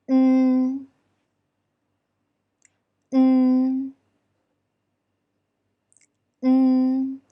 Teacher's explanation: When saying the alveolar nasal n, the tongue tip should press the upper alveolar ridge, and the upper and lower teeth are close to each other. N, n, n. And remember to keep your tongue position until you totally finish pronouncing the syllable.